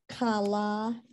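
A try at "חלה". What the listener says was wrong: Okay, except that's a chala. There's no dot.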